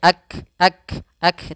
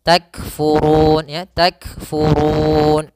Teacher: Ada sedikit hamasnya, ak, tapi jangan putus, jangan akfur ya, tapi langsung saja takfurun ya, takfurun.